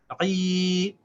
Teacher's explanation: Remember, this combination gives you the long vowel e. So you have to pronounce the ayn with that long vowel e.